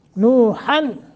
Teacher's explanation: یہاں نون تنوین کے بعد حمزہ ہے لہذا اظہار کرنا ہے